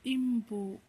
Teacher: ಇಲ್ಲಿ ಅನುಸ್ವಾರಕ್ಕೆ ಮ ಸೌಂಡ್ ಬಂದಿದೆ